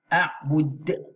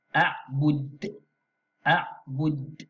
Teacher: Kemudian tulisan yang warna biru muda ini di hujung huruf dal ini qalqalah. Qalqalah kubra ni sebab di hujung. Jadi kita baca dengan bacaan melantun.